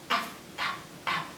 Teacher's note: you have to put your teeth over your bottom lip and say, kind of like you're putting out a fire